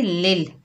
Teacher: लाम को लाम के साथ मिलाएंगे, लिल, साकिन हर्फ 1 मरतबा पढ़ा जाता है